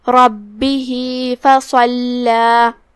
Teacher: با پہ تشدید ہے، 2 حرف کے برابر با کو پڑھنا ہے. آخری میں ہا کے نیچے یہ چھوٹا سا مد ہے، یہاں مد صلہ صغرا ہے.